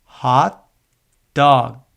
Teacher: practicing to keep the T and G sounds at the end of each syllable closed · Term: closing sounds